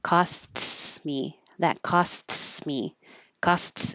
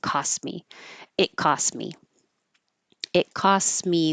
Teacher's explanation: this is a situation where we don't take time to make the STS um combination because that would sound like costs me that costs me costs